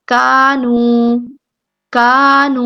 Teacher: دونوں کو ہم نے 2 حرکات لمبا کرنا ہے، مقدار ایک جیسی رکھیں گے